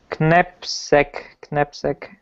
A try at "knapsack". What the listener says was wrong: We don't pronounce the K. It's knapsack.